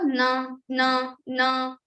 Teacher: So your tongue is touching your teeth and also you are using your nose. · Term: nasal consonant